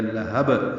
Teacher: با ساکن پہ قلقلہ ہو جائے گا۔ لہب یہ وقفاً قلقلہ ہے جیسے ہم نے رک کر پڑھا۔